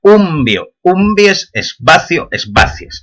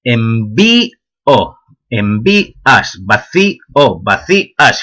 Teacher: cambia el acento en las formas asturianas en la raíz, en las formas castellanas en la desinencia